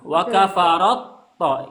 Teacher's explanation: Ya, ta. Apabila ta bertemu dengan to, taknya hilang, to yang dibaca gitu. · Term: idghamkan